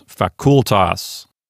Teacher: Nothing lengthens the vowel, but the syllable is considered to be a long syllable. So here the penult is a long syllable, and so it will get the accent. Despite the fact that I want to put the accent on the F-A syllable, really, according to the rules, it goes on the C-U-L syllable.